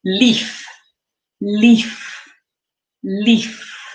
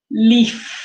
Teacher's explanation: to make the sound at the end of leaf, we also have our teeth touching our bottom lip, but we're not vibrating it